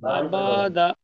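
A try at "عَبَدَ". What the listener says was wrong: টান দেবেন না বলেন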